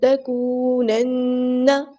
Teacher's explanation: واو مدہ پہ ٹائم پورا دینا، ایک الف کے برابر، نہ ایک الف کے سے زیادہ دینا ہے، ایک الف یعنی 2 حرکات، تو اس کو نہ اس زیادہ کرنا ہے نہ کم کرنا ہے.